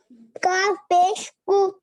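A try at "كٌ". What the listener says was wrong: पेश नहीं, दो है, एक ऊपर।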